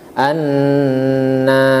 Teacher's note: Annas disini dibaca dengan guna yaitu ditahan suara Annas Annas ya lebih kurang dua sampai tiga ketukan Annas baik